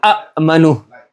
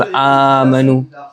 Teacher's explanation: So what they do, takhfif. They change the second hamza into an alif, so it becomes amanu.